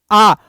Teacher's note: विवृत स्वर, या इनको ही बोलते हैं निम्न स्वर, यानी लगभग खुला